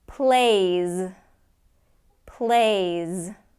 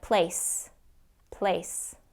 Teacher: If you don't get that Z at the end, it's going to sound like place